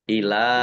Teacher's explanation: karena bertemu dengan huruf alif di kata yang berbeda, maka menjadi mad jaiz munfasil. Dibaca panjang boleh 5, boleh 2 harokat.